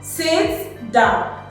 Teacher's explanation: Sit goes up while down comes down. So the falling and the rising intonation.